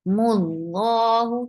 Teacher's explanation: Lafz jalala will be heavy and circle your lips. For dhamma, mul, as soon you will touch lam, there will be sukoon on lam.